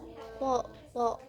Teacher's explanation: Huruf th itu berada di ujung lidah dan gigi.